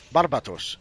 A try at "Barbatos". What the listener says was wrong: He's a bat. You meant to emphasize the bat part.